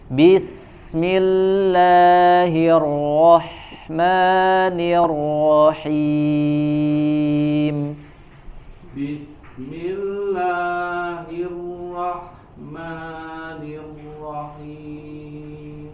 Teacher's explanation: Bismi dari sin ke huruf mi-nya tidak ada jeda. Jangan bismillah, jangan jeda dulu langsung.